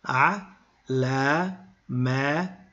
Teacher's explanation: because of a little technicality we don't pronounce the lam in the AL we say a man to list